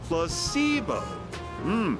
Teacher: the stress is on the middle [Music] syllable very good you're figing interest well a placebo is